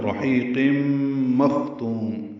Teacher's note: قاف پر تنوین کے بعد میم آنے کی وجہ سے ادغام ناقص مع الغنہ